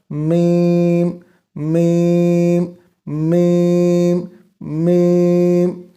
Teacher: جب ہم میم کو بولتے ہیں تو آواز ہمارے ناک میں گونجتی ہے، ہمارا ناک وائبریٹ کرتا ہے، ہمارے ناک میں آواز پھیلتی ہے۔